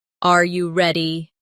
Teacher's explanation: when a native speaker asks a yes or no question like, Are you ready? The pitch of their voice goes up at the end.